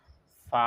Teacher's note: সামনের উপরের দাঁতের আগা আর নিচের ঠোঁটের সাথে মিলাইয়া ফা উচ্চারণ করা হয় · সামনের উফরর দাঁতর আগা আর নিচের ঠোঁটের সাথে মিলাইয়া ফা উচ্চারণ করা হয়। আপনারা ফা উচ্চারণ করার সাথে দেখবা যে সামনের উফরর দাঁতের সামনা বা আগ সাইড আর নিচের ঠোঁটের সাথে মিলিয়ে এখান থেকে ফা উচ্চারণ করা হয়।